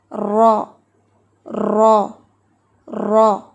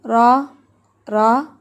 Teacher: Number 1 کہ را جو ہے اس میں تکرار ہوتی ہے، ٹھیک ہے، را میں تکرار ہے، وائبریشن ہے، جیسے را را را۔